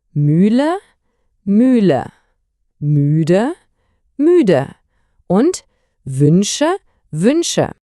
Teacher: Achten Sie auf die gespitzten Lippen.